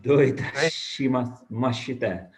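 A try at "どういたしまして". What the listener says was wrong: Yeah, but yeah, your pronunciation was really good.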